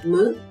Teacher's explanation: les cordes vocales vibrent et la luette ouvre la fosse nasale